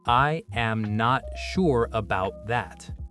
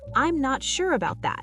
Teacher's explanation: Peak on sure, fall on that. Notice I'm not sure flows with no break. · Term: blend